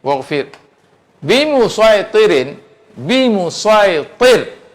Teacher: Waqaf atas ra. Ra tu tak baris kasrah, tapi mendatang huruf sebelum dia ni kasrah. Disebabkan kasrah itulah dia dinipiskan.